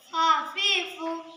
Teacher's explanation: নিচের ঠোঁটের পেট সামনের উপরের দুই দাঁতের আগার সঙ্গে লাগাইয়া উচ্চারিত হইবে ফা